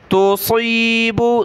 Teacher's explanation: सौद को मोटा पढ़ना है, ता बारीक है, छोटी ता है